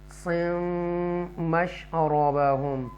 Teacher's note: मीम इख्फा letter में से है, तो लिहाजा हम इसको नस्लाइजेशन गुन्ना करके पढ़ेंगे।